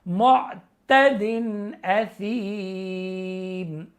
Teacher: کیونکہ یا مدہ ہے وقف کی وجہ سے یہاں پہ مد عارضی ہو جائے گا